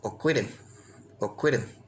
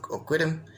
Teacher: The L is pronounced more like an R, Oquidim, and the IN is more oftenly pronounced as I am.